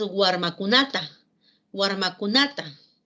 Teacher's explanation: Guarmacunata ha añadido un morfema, el morfema ta, que indica beneficiario. Y fíjense que el acento sigue estando en la penúltima sílaba.